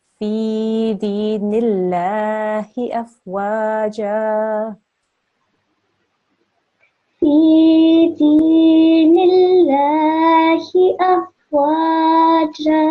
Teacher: when we are joining with a kasra to the lam for Allah here, we don't need to make the thick sound. We can keep it to a thin sound.